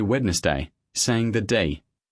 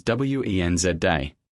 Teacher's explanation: The D is completely silent.